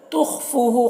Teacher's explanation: خا کو پر پڑھیں گے، حروف مستعلیہ میں سے ہے، فو میں واو مدہ ہے، اسے ایک الف کے برابر کھینچیں گے۔